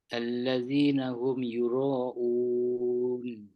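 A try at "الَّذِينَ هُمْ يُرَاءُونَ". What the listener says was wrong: Euro tu kena panjang, ada mat tanda panjang tu. Dua tu kena panjang. Satu yang panjang yang belakang tu sebab kita nak berhenti kat situ. Yang depan tu yang tanda mat tu nak jumpa hamzah tu kita kena panjangkan sebab dia ada mat lain kat situ. Okey, mat badal.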